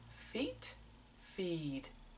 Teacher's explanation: quite short and quick when I say feed the vowel the EE sound is just minimally longer